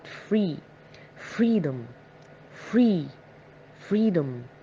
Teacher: if we are looking at the word freedom itself we're going to notice that we stress the part free